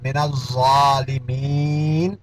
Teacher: یہاں ظا کے اوپر کھڑا زبر ہے اور الف مدہ کی آواز دے دے گا